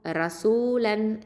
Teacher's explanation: இப்போது ரா ஃபதா ரா இது தஃப்ஹீம் தெளிவாக ஓதணும், வல்லினமாக ஓதணும்.